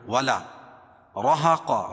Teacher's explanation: را کو پور پڑھیں گے کیونکہ را کے اوپر زبر ہے. اور 2 زبر کی تنوین پر وقف کی صورت میں ایک زبر کے قائم مقام الف کو پڑھیں گے اور دوسری زبر اپنی حالت پر باقی رہے گی.